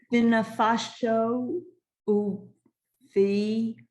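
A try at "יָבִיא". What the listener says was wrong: Yavi. Don't forget the yud.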